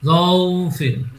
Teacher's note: লিনে লিনের টান হবে না, তাড়াতাড়ি পড়তে হবে। তাহলে মিউ জৌফ- জৌফিন, মিউ জৌফিন।